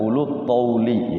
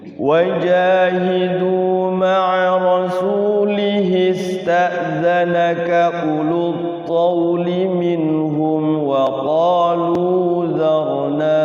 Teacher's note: u-nya nggak panjang, lu-nya juga nggak panjang, jadi langsung ulut tauli ya.